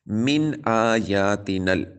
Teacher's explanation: نون ساکن کے بعد حمزہ حروف حلقی میں سے ہے، تو یہاں پر بھی اظہار ہو رہا ہے، یعنی غنہ نہیں کریں گے